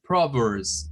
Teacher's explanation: Vean que esa S que está al final se convierte en una Z al pronunciarlo.